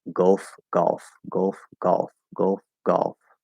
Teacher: with the merger and not doing the L-colored schwa, then they're going to sound very, very close.